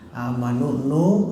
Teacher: Berikutnya ada lafaz ada nun mati, waw mati amanu ya. Amanu nu, ada waw mati mad tobe'i, panjangnya 2 harkat